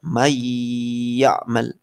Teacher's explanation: Man ketemu ya'mal masuk ke ya.